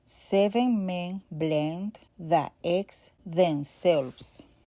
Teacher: Since Spanish doesn't have a short E, her short E sounds more like the E, very close to the long A. It's between the short E and the long A.